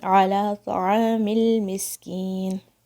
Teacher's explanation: میم پھر لام سے جوائن ہوگا بغیر شیک کرے ہوئے